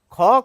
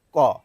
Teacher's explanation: দেখুন আমি বলছি ক। খ কিন্তু শুধু ক এর সঙ্গে একটি হ মিশিয়ে বের হচ্ছে আমাদের মুখ থেকে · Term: মহাপ্রাণ